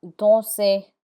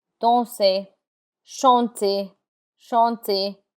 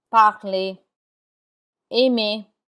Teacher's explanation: the R is not pronounced in words that end in ER.